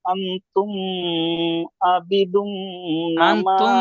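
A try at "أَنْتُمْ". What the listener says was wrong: আনতুম বলে গুন্না করছেন, আনতুম বলে গুন্না করছেন, এখানে ইজহারের স্বাভাবিকভাবে মিম সেকেন্ডের পরে বা মিম ছাড়া অন্য অক্ষর আইন এসেছে, বিনা গুন্নায় পড়তে হবে আনতুম। তুম বলে গুন্না হবে না।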